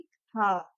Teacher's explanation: जब हम ह का उच्चारण करते हैं तो हवा एकदम बंद कंठ को खोल के बाहर निकलती है। उसे इसलिए हम इसे काकल्य वर्ण बोलते हैं।